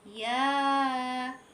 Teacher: Ya-nya kita baca 2 harokat dan sin, ya, nun mati. Sin itu kita baca 6 harokat.